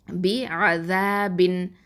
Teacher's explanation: குன்னா செய்யக்கூடாது, அதாவது மறைச்சி ஓதக்கூடாது, ஹைட் பண்ணக்கூடாது.